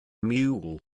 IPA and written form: mjuːl (Mule)